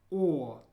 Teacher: It's a very rounded O sound, like you have to really make an O with your mouth. O. It's like in store.